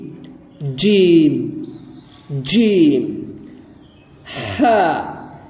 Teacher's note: یہ حلق سے نکلے گا، حلق کے شروعاتی والے حصے سے